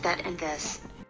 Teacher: To make the TH sounds, put the tip of your tongue between your teeth and let the air flow out. Is a voiced TH sound, which means your vocal cords vibrate